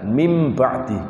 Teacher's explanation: Kalau mim ba'di itu ada gunnahnya, enggak ada ikhfa'nya.